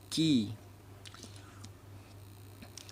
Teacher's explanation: Dan makraj atau tempat keluarnya huruf kaf ini yaitu pangkal lidah agak ke depan sedikit dari makraj huruf qaf ke langit-langit atas